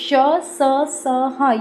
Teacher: इनके उच्चारण के लिए हवा जो रहती है वो मुंह के अंगों से रगड़ खाकर बाहर निकलती है। जिससे गर्मी या ऊष्मा पैदा होती है इसलिए इनको कहा जाता है ऊष्म व्यंजन।